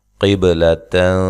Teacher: قاف کو موٹا، با پہ قلقلہ